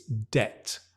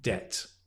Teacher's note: be very careful because the B sound, boom, is dropped.